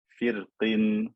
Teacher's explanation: it's best to read with tarqiq when joining to the next word because then the kasra appears. Firqin, so the cause of the fatness of the qaf is gone, so it's best to read with tarqiq.